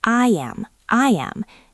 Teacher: When your mouth is wide like you are smiling and you need to get to the next vowel, your mouth naturally makes a y sound. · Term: y bridge